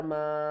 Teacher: بڑی مد ہے تو اس کو ہم نے 3 سے 5 الف کی مقدار کھینچ کر پڑھنا ہے